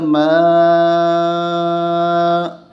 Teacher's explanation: یہ بڑی مد ہے، اس کو 3 سے 5 الف کے تک کھینچا جاتا ہے